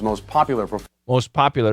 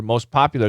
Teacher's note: The T's gone. S canceled the T.